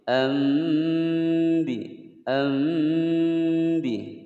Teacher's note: nun sukun bertemu ba, maka suara nun sukunnya ini diganti menjadi suara mim. Ambi, ambi, dan jangan terlalu rapat bibirnya, ya.